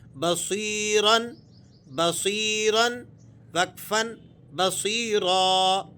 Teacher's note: با زبر با، صاد یا زیر سی، بصی، رادو زبرن، بصیرن، وقفن، بصیرا۔ یا ساکنہ ہے اور اس سے پہلے والے حرف پر زیر ہے تو یہ یا مدہ ہے۔ اس کو آپ نے 2 حرکتوں کے قائم مقام کھینچنا ہوتا ہے۔